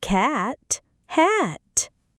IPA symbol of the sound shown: æ